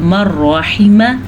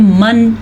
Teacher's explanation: یہاں پہ نون ساکن کے بعد را آیا تو ہم نے پڑھا مرحیمہ، غنہ نہیں کیا، نون کی آواز ہی نہیں آئی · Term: ادغام بلا غنہ